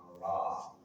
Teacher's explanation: Ujung lidah bertemu dengan gusi dua gigi seri atas. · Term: huruf ra